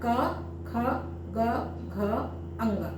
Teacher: कंठ से हो रहा है। कंठ उठ के छू रहा है। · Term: क वर्ग